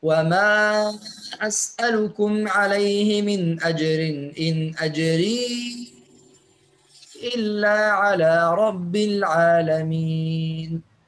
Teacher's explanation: كلمة أجري يقرأ شعبة بالإسكان مع مراعاة المد المنفصل فيقرأ وما أسألكم عليه من أجر إن أجري إلا على رب العالمين.